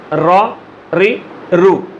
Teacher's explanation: ये सिर्फ सनाया उलिया से ज़बान के मसूड़ों से ज़बान का किनारा लग के या नोके ज़ुबान लग के रा अदा होता है। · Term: मखरज रा का